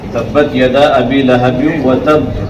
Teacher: یہاں تشدید لگنے کی وجہ سے اور زیادہ آواز لوٹے گی، یعنی تھوڑا سختی کر کے رکیں گے · حطب دونوں ہونٹ ملیں گے آواز لوٹے گی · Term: قلقلہ